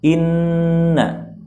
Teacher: Nun yang bertasydid dengan fathah hukumnya gunnah 2 harokat